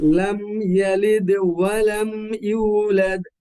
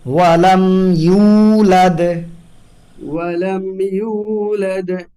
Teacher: ইয়া বলার সময় যেন হামজা না আসে